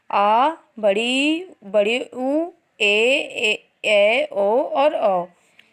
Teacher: दीर्घ स्वर, इन स्वरों के उच्चारण में ह्रस्व से दुगना समय लगता है